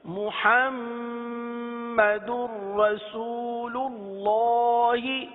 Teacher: اللہ کے لام کو پر پڑھیں